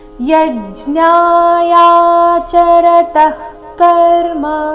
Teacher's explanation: ಯಜ್ಞ ಯ ಮೇಲೆ ಆಘಾತ